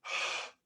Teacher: that's ingressive airflow, the airflow going in